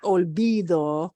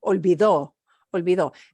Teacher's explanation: notice we punch the O at the end